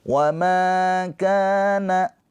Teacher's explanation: Ma panjang dua harakat karena ada pemanjangnya yaitu alif. Alif sebelumnya harakatnya fathah. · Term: Mad thobi'i